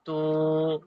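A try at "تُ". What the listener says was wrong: তাপেশ তু, টান হবে না, তাপেশ তু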